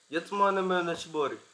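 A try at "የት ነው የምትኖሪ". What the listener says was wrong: No, yet no mitnori. There is no buri in that sentence.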